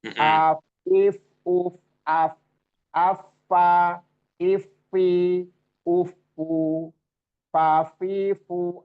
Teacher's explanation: itu bertemunya ujung gigi seri atas dengan perut bibir bawah. Jadi bukan P, bukan P, bukan P, bukan huruf P, tapi F.